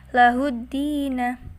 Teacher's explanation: kalau alif lam syamsiyah itu tidak tampak alnya. Dan huruf sesudahnya itu bertasydid.